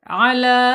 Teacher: Ini namanya mad th'i atau mad asli ya. Panjangnya dua harakat. Satu alif atau dua dua ketukan.